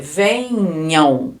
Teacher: Vocês percebem que esse M aqui, ó, a gente fala também com som de vogal. Então, isso aqui também é um ditongo, uma vogal e a semivogal, porque o som é de U, ó. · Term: ditongo nasal